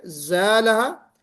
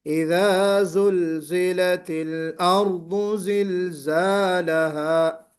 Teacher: الف سے پہلے جو زائی آ رہا ہے وہ چونکہ حرف استفال ہے اس لیے ہم اس کو باریک پڑھ رہے ہیں